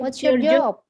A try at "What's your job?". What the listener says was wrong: what's your job? Ah, jangan naik intonasinya tapinya ya. Kalau yang what's your job itu naik. Yang betul adalah what's your job? Turun.